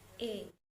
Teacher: tinggi-rendah lidah Madya bawah gerak lidah bagian depan striktur semi terbuka bentuk bibir tak bulat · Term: bunyi vokal